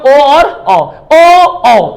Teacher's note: तो देखिए भाई, इसमें कंठोस्थ में ओ और ओ, तो एक तो ये ओठ उठ भी रहा है दोनों, और आवाज भी कंठ से आ रही